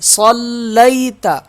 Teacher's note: لام پہ تشدید ہے، سخت پڑھا جائے گا، اس یا کو ہم کھینچیں گے نہیں، لام یا زبر لی۔